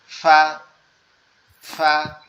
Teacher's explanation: আমাদের উপরের দুই দাঁত নিচের ঠোঁটের পেটের সাথে লাগবে, লেগে উচ্চারণ হবে ফা।